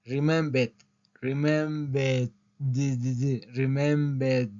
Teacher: la R prácticamente no suena